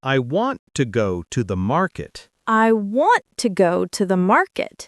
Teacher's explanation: in the sentence, I want to go to the market, the stress is on want and market.